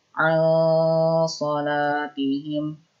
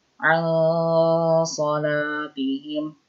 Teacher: Kemudian ketika mendengung, posisi lidah kita sudah berada di huruf shad. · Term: ikhfa